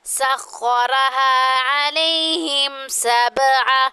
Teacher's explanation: اب با جو ہے یہاں پہ جو ہے ساکن ہے تو یہاں پہ قلقلہ کریں گے